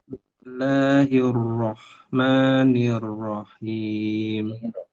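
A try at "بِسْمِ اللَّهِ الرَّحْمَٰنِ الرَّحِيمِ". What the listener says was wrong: Nir, jangan di ayun. Nirrahim.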